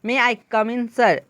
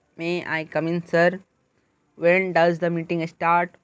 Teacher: When we make a request we are polite and there is change in intonation from low to high। आप जब भी विनम्र रहते हो और किसी के साथ आप जो है रिक्वेस्ट करते हो तो क्या आपका कहलाता है, इसमें क्या होता है इंटोनेशन चेंज होता है, लो टू हाई इंटोनेशन होता है। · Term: राइजिंग इंटोनेशन